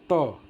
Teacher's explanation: तो देखना जीभ कहां जाता है और कहां मारता है। जैसे त बोलते ही देखना यह जीभ जाकर के दांत में मारता है ऊपर और तब यह बाहर आवाज आ जाती है। इसलिए दंत से इसका उच्चारण होता है।